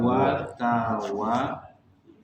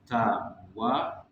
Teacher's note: Kemudian di ayat ketiga juga di sini ada banyak huruf waw ya. Huruf waw, cara mengucapkan yang benarnya adalah dia itu bilabial. Kalau ada yang sastra Inggris di sini, bilabial berarti dia melibatkan dua bibir.